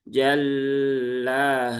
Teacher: Lam bertasdid dibaca ditahan terlalu lama.